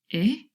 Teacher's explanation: this is an open mid front vowel sound so our mouth is a little bit more open the tongue again is lower and then really at the bottom here the open vowel sound